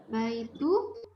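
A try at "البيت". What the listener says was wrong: Al-nya jelas namanya al-bait dan tanpa tanwin.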